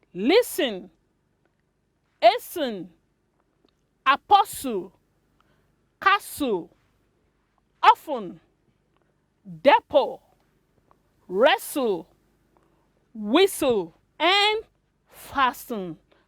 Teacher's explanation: in all these words the letter t is silent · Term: silent t